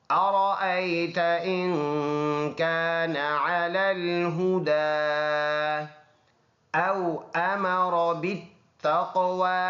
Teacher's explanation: أو واو لین ہے، نرم ادا کریں گے